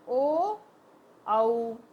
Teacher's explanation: ओ sound आ रही है गले में से, और होठ घूम रहे हैं हमारे, गोल हो रहे हैं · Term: कठोष्ठ